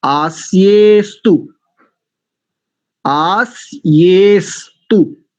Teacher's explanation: आस्य अस्तु नहीं करेंगे, ध्यान रखिए, बहुत गंभीर बात कहने जा रहा हूं, लगभग सबकी त्रुटि है, लगभग सबकी। आस्य अस्तु बोलते हैं, अकार का तो लोप है वहां। अगर अकार का लोप नहीं होता तो देखो, आप इसमें देखो, आस्य के बाद अवग्रह का चिन्ह लगा हुआ है।